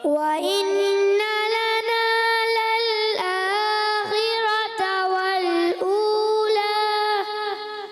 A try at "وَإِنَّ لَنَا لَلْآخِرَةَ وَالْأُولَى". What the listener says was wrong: تھوڑا سا غنہ کمزور رہا ہے، غنہ پورا کرنا ہے.